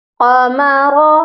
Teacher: قاف بھی موٹا ہوگا اور را کو بھی موٹا کر کے پڑھا جائے گا